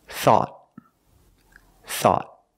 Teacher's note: At the end, the tongue goes up and makes a stop T.